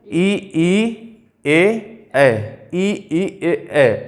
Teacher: ऐसा लग रहा है जैसे जीभ से निकले जा रहे हैं बिल्कुल आगे हिस्से से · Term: अग्र स्वर